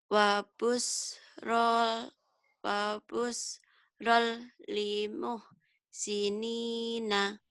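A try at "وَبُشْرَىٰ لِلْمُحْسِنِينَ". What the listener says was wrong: Wa busyra, jangan wa busyrol. Wa busyra lil muhsinin. Diulang.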